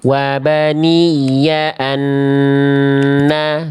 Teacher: Nun sukun ketemu nun tasdid. Nun sukun ketemu nun menghasilkan tasdid di nun yang kedua. Anna tahan dulu dua harakat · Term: idgham bigunah